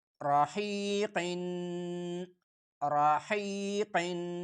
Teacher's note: اگلا لفظ را زبر را، हा या जीर ही, ये नरम हा है, सिर्फ गले पे जोर लगा के हा या जीर ही, हा हा, हा या जीर ही, राही राही, काफ दो जीर क़िन, मोटा काफ, दो नुक्तों वाला काफ मोटा करके पढ़ा जाता है, जबान की पुश्त ऊपर की तालू की तरफ थोड़ा उठाकर, काफ दो जीर क़िन, राहीक़िन राहीक़िन, वक्फन जब वक्फ करेंगे राहीक़ राहीक़।